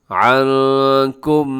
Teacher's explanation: نون ساکن کے بعد کاف ہے جو کہ حروف اخفا میں شامل ہے، تو یہاں پر ہم اخفا کریں گے۔